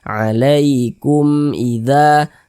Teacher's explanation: dibaca jelas, tidak berdengung, baca pendek saja. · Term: izhar syafawi